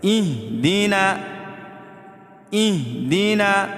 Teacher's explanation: تو دیکھیں اہدنا کی جگہ اہدنا، یہ ہا ہے، ہا نہیں ہے اور نہ خا ہے. یہ دو چشمی ہا ہے، حلق اس حصے سے ادا ہوتا ہے جو حصہ سینے کی طرف ہے